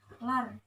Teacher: bacaan ra tafkhim sebab ra sukun didahului harokat fathah